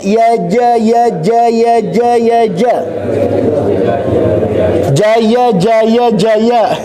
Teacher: Ya ja, dua-duanya nggak nempel ujung lidahnya ya. Tapi yang nempel itu adalah punggung lidah. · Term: huruf ja